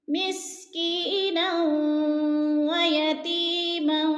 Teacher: درمیان والا الف نہیں پڑھا جائے گا بلکہ نون کو واو کے ساتھ ملا کر پڑھیں گے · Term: ادغام